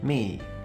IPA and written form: mi (me)